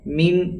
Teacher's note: من یہاں پر پھر اخفا ہے، چونکہ نون ساکن کے بعد حروف اخفا میں سے شین آیا ہے، اس لیے یہاں پر اخفا یعنی ناک میں آواز کو چھپا کر پڑھیں گے۔